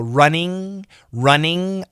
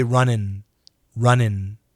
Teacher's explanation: especially the ing verb, when we say it fast, we change it to an IN.